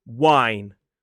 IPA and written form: waɪn (wine)